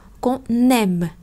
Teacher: Ở câu cuối cùng hai từ cuối cùng và chúng ta nối chữ N qua cho chữ M ở đằng sau